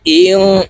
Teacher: ألم يروا كم أهلكنا قبلهم من القرون أنهم إليهم لا يرجعون وإن كل لما ওয়াও জবর ওয়া, হামজা নুন জের ইং, ইকফা গুন্না, নুন সেকেন্ডের পরে ইকফার হরফ কাফ আসছে, তো এই নুনকে নাকের ভিতরে লুকাইয়া গুন্নার সহিত পড়ব।